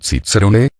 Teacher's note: en algunos lugares el resultado fue cicerone con un sonido ts parecido al de fortia